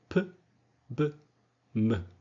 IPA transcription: p b m